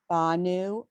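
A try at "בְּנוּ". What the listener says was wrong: Benu. Two dots. Not an ah. It's 2 dots.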